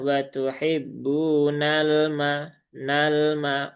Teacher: sifat tawasudnya ditunaikan dia tidak tertahan dan juga tidak mengalir dia di tengah-tengah maka alirkan sedikit saja kemudian Kemudian pindah ke huruf berikutnya.